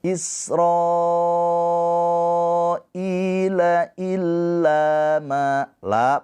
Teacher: hukumnya sama seperti mad thabi'i dipanjangkannya dua harakat